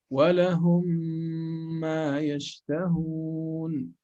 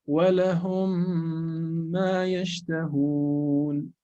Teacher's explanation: So, okay, you merge both. You merge both into one single meme with shadda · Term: Idgham